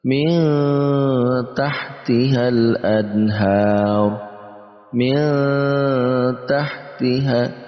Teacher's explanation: kita juga baca dengan samar dan kita tambahkan eng di antara nun mati dan ta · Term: ikhfa